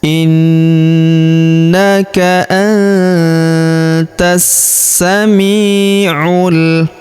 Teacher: huruf mi kita ayun sekali atau kita panjangkan dua harakat karena terdapat ya sukun di depannya